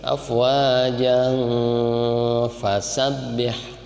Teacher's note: Lihat aja, tanwin menghadapi fa, ikhfa berarti ya.